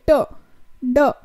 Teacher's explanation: मेरी tip and blade of the tongue जो है वो मूव होती है